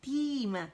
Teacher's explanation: مد طبیعی ہے، 2 کاؤنٹ سے کھینچیں گے، نیچے کی طرف آواز جائے گی. تیم، میں کے اوپر زبر ہے تو آواز 1 کاؤنٹ کے لیے اوپر جائے گی